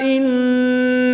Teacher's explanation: نون مشدد ہے تو یہاں پر غنہ کر کے پڑھیں گے